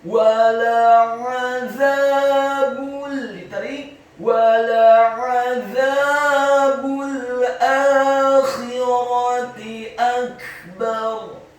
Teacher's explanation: Lidahnya agak keluar sedikit, fathah 2 harokat karena setelahnya ada alif. Kemudian huruf ba-nya dibaca tipis, dhammah. Cukup 1 harokat saja karena setelahnya langsung disambung huruf lam yang sukun · Huruf za-nya dibaca tipis, tarqiq. Lidahnya agak keluar sedikit, fathah 2 harokat karena setelahnya ada alif.